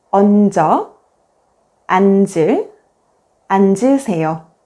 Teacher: the second consonant, 지읒 becomes the initial consonant in the next syllable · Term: linking sounds